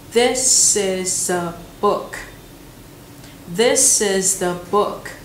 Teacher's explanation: Bởi vì ba từ this is a đã bị nối vào nhau rồi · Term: nối âm